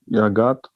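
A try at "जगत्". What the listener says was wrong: Jagat. The J is J.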